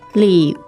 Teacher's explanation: the tones there are third and fourth